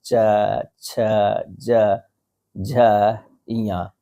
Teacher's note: जिन वर्णों के उच्चारण में जीहवा का मध्य भाग तालु कठोर तालु का स्पर्श करता है उन्हें जो है तालव्य वर्ण कहते हैं।